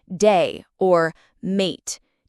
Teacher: the vowel sound in day or mate can be quite high and pronounced almost like die or might to an unfamiliar ear. Also, the I sound in words like fish can sound more like fish.